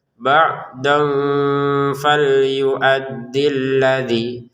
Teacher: Nah, di sini dengan samar cara bacanya. Kemudian ba'don bertemu fa dibaca dengan samar juga ya.